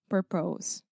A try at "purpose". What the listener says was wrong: Yeah, so you're saying purpose, so you're making an O sound, but this is simply the sound, the schwa, ou son du schwa, okay?